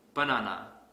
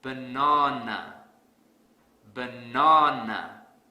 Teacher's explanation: I will stress the second syllable really hard